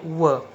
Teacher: आगे वर्ण है व। इसका उच्चारण करते समय दांत, जीभ और ओठ इनका संबंध आता है, इसलिए आते हैं दंतोष्ठ श्रेणी में।